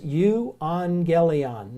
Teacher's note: if you notice I'm kind of pronouncing an ng sound there